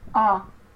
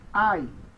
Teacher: mas você não vai pronunciar a segunda letra do ditongo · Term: ditongo impróprio